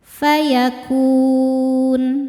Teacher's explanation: Mad thobbiinya wau sukun sebelumnya baris dommah. Huruf yang disukunkannya huruf nun maka kafnya panjang. Boleh dua atau empat atau enam harakat asal konsisten dalam sekali baca. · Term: mad arid lukun